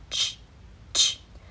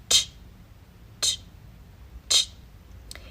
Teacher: this is an affricate, not a fricative, which means there's this process of breaking through the obstruction with air